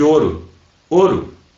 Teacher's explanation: Tu não fala esse U. Esse U ele desaparece, ele é tão fraco que ele desaparece, né? numa pronúncia mais rápida. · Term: semivogal